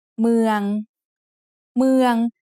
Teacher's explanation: is said with a mid-tone because it has a low-class initial consonant and a live syllable ending